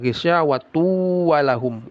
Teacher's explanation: Tanwin bertemu wau. Idgham bighunah. Ya. Dimasukkan lalu didengungkan. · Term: idgham bi gunnah